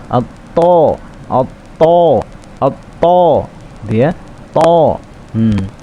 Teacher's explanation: To, tapi ditebalkan atau dikeluarkan tebalan, dibulatkan. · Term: huruf tebal